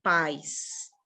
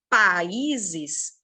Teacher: Pais eu vou morrendo. Países, eu mantenho a entonação. Então, aqui também vai ser um hiato.